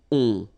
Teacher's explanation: Okay, and then this O-N, so it's a nasal and it goes in your nose and it goes like on. All right, so you don't hear any N, so it's really on